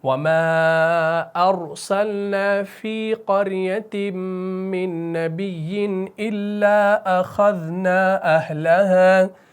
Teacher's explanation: را ساکن سے پہلے قاف ہے، مفتوح ہے، تو یہاں پر را کو موٹا کر کے پڑھنا ہے